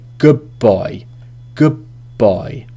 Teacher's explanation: So it's almost like two B sounds. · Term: assimilation